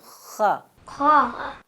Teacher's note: خا کو پڑھتے ہوئے آپ نے ہونٹوں کو گول نہیں کرنا. ٹھیک ہے, خا ہونٹ کو پیچھے رکھنا ہے آپ نے, خا.